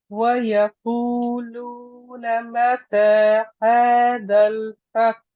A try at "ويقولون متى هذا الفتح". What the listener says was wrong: I need to hit just the ha at the end. When you stop on the word fath, you have to let the ha then is rakhawa, let it run. I can't hear the ha.